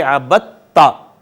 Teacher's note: دال کا تا میں ادغام ہو گیا، ایسے ادغام کو جو دو ہم مخرج حروف پہ ہوگا اس کو ادغام متجانسین کہیں گے۔